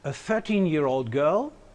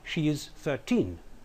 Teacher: 13 can be stressed on the first syllable in cases such as a 13 year old girl whereas the second syllable has to be stressed if you want to say something like she is 13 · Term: shift stress